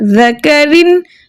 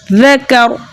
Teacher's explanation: تو را ساکن ما قبل حرف مفتوح ہے. را ساکن سے پہلے والا جو حرف ہے وہ زبر کے ساتھ ہے، اس لیے اب ہم را کو موٹا پڑھیں گے